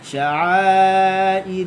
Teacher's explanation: la lembut je, jatuh lidah kat bawah